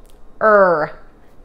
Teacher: you probably just made a bunched r your tongue went back and you saw this little arch the back